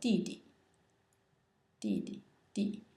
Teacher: it's pronounced in the fourth tone